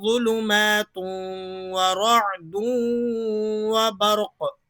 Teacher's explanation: تنوین کے بعد یرملون کا واو آ رہا ہے، ادغام ہوگا غنے کے ساتھ